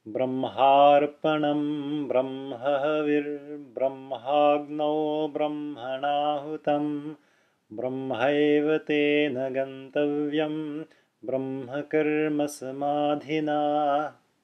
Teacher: I am not putting any extra time whenever I encounter a space between words. I'm completely ignoring them just because, as I mentioned before, that's what you should do whenever you're chanting or singing Sanskrit.